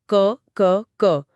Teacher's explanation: और अघोष का मतलब है बिना गूंज के, यानी जब हम अघोष वर्ण बोलते हैं तो स्वर तंत्रियों में कोई कंपन नहीं होता